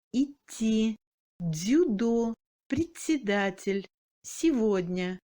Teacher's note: Devant les consonnes molles D, T, Z, S et N, le D devient mou. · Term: amollissement